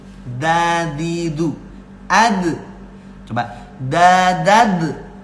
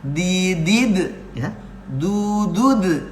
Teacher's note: Ujung lidah ini dirapatkan dengan pangkal gigi seri bagian atas. Nah, pangkal gigi seri itu tumbuhnya gigi atas, nah ujung lidah dirapetin. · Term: huruf dal